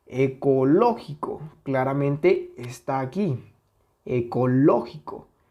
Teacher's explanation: es una palabra esdrújula porque su sílaba tónica es la [Música] antepenúltima